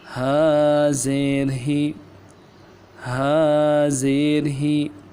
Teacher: زیر کو پڑھتے ہوئے آواز کو نیچے دبائیں گے، نیچے کی طرف دبائیں گے، جھٹکا نہ دیں گے، نیچے دبائیں گے۔